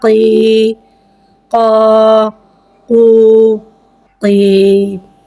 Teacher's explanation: قوف حرف مستعالیہ ہے، لہذا اس کی آواز الگ سے موٹی ادا ہوئے گی۔ · یا ساکن سے پہلے زیر آ رہا ہے، یا مدہ ہو رہا ہے، لہذا یا مدہ کو ایک الف یعنی 2 حرکات کے برابر کھینچ کے پڑھیں گے اور زیر کو نیچے گراتے ہوئے ادا کر کے پڑھیں گے۔ قاف، یا زیر قی، قا، قو، قی۔